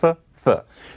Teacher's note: Th. I'm sticking my tongue between my teeth.